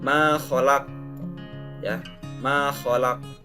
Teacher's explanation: Jadi memang asalnya kata ma khalaq itu tidak sukun asli tapi fathah. Nah, karena diberhentikan atau diwakafkan maka menjadi sukun, dan itu termasuk hukum qalqalah juga, ada pantulan suara.